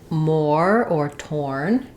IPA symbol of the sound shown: ɔr